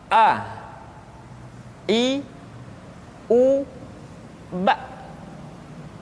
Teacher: Yang pertama adalah huruf A. Makhraj ketika mengucapkan huruf A berada pada tenggorokan yang terjauh.